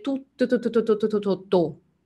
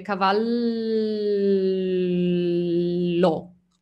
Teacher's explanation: quando non abbiamo continuazione è una consonante esplosiva come tutto